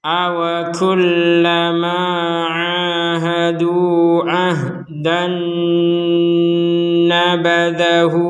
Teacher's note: fathatain bertemu dengan Nun maka kita memasukkan tanwinnya ini kepada huruf nun disertai dengungan